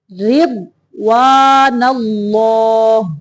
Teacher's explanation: را کو باریک پڑھیں گے، ضاد کو موٹا